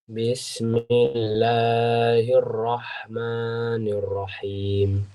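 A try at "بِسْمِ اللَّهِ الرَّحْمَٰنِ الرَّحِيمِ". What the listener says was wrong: Masya Allah, santum.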